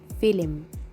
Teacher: film instead of film actually in the turkish spelling in general the turkish tongue is not that flexible to spell the letters without putting a hidden vowel in between